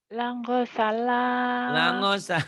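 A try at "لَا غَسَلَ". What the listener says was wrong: Lago salah bukan langosala. Lago, go.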